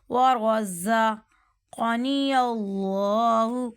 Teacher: ورزقنی اللہ، اب ورزا، زا جو ہے نا سیٹی والا حرف آ رہا ہے، یہاں پہ سیٹی کرنی ہے